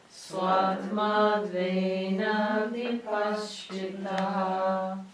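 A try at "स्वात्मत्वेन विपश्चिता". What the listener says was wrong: Not vipaschitaha, vipaschita. Vipaschita means by the vipaschit or as the vipaschit.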